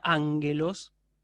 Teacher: es una palabra que se escribe con dos gamas pero la primera de ellas se pronuncia como una n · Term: gama nasal